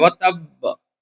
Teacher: یہاں پہ دال الف زبر دا اوپر مد ہے، مد منفصل، اس کو تھوڑا کھینچیں گے اور یہاں پر تشدید ہے، اور جب ہم روکیں گے تو ایسا لگے گا آخر میں کہ ہم با زبر ب پڑھ رہے ہیں۔